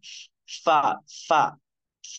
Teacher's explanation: ऊपर के ऊपर के दांतों का किनारा और नीचे के होठ का अंदरूनी हिस्सा